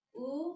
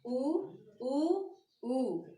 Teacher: उ से ज्यादा ऊ में लगेगा, मतलब इनको हमें थोड़ा सा लंबा बोलना है।